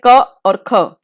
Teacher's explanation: क और ख ध्वनि हमारे कंठ से बोली जाती है।